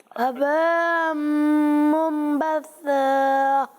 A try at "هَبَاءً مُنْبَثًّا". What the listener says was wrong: ابھی بھی یہاں مد کی مقدار پوری نہیں ہوئی. ہباء منبثا.